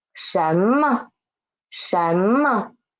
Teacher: this mo is neutral tone